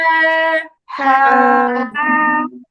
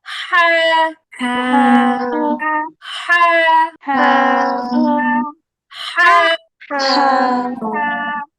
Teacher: হা বলার সময় গলার মাঝখানে অবশ্যই হালকা চাপ লাগবে, একা একাই চাপ লাগবে, ধরে দিতে হবে না।